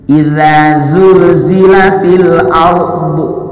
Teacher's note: ra sukun sebelumnya fathah, namanya tafkhim, tebal. Bila mana ra sukun sebelumnya fathah atau dhammah, maka ra ini dibaca tafkhim alias tebal.